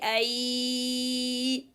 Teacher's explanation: ya is articulated from the middle of the tongue when it is elevated towards the roof of the mouth, and the sound is produced easily, and it is opened, lowered, the tongue is no need to make yo, it's yeah, and softness, the sound is running, ay.